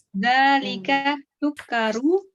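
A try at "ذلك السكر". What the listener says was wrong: Sinnya juga tasdid, Bu, karena al-syam siyah.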